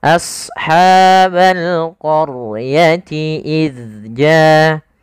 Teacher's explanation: Yaitu ketika adanya huruf ra berharokat fathah salah satunya, berharokat dhammah, kemudian atau huruf ra yang dia sukun didahului dengan fathah sebagaimana fal qaryah. Maka ra-nya tebal, jangan qaryah tapi qaryah. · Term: ro tafkhim